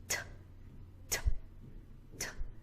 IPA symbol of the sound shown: t